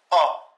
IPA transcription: ɒ